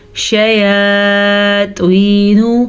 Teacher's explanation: یا مدہ کو کھینچ کے پڑھیں گے کیونکہ یا ساکن ہے اور پیچھے زیر ہے